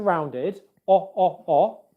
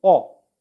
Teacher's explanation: O, as in hot. For this vowel sound, our lips are rounded, O, and our mouth is narrow, O. When I make this sound again and again, I feel tension here in my cheeks. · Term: O vowel sound